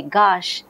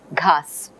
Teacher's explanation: The aspiration is gone, sa is become sha.